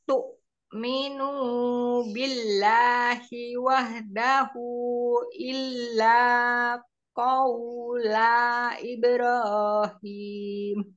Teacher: Minunya dua harokat. Tu'minunya dua harokat.